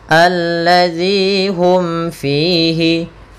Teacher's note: Nah, sedangkan di sini ada kasrah bertemu ya dengan ya sukun. Maka panjangnya zi 2 harokat. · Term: mad tabi'i